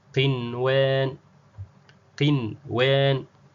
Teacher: hakuna kuunganisha lazima isomeke kwa uwazi idhar ili kulinda maana ya neno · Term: idhar mutlak